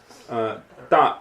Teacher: It can be soft, but unaspirated.